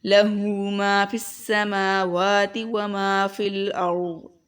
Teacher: اس سے آگے دیکھیں لہو ما فی السماوات، لہو ما فی السماوات وما فی الارض، ٹھیک ہے، یہاں پر میم کے اوپر کھڑا زبر، واو کے اوپر بھی کھڑا زبر ہے، ٹھیک ہے، اس کو ہم لمبا کریں گے، اور ما جو ہے اس کو بھی لمبا کریں گے، کیوں؟ کیونکہ یہاں پر الف مدہ ہے